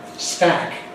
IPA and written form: stæk (stack)